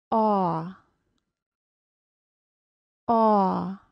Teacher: The lips do not close into a small circle like the long O, however. The lips are open, round, and tense. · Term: AW sound